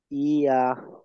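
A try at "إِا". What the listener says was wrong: ই আ। এটা আইন হয়ে যাচ্ছে। ই আ। নর্মাল।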